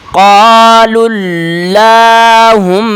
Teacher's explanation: لام کو اگلے لام کے ساتھ ملائیں گے